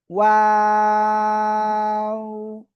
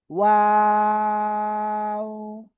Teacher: দুই ঠোঁট শুরুতে গোল এবং মাঝখানে দুই দিকে প্রসারিত হবে, আবার শেষে এসে গোল হবে।